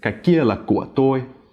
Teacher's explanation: The là is smooth and the của is creaky.